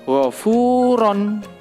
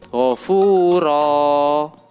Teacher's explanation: Dalam contoh wafuron, di situ roknya yaitu fathatain. Ketika diwakafkan diganti menjadi alif, fathatainnya hilang. Wafuro, nah panjang, satu alif atau dua ketukan. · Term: waqaf ibdal